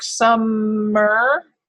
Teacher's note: it seems like that M almost belongs with both syllables